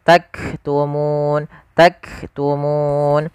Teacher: sifat hamasnya yaitu tahan dulu suara kafnya karena dia sukun sebagaimana huruf ta, ak, baru nafasnya kita lihatkan.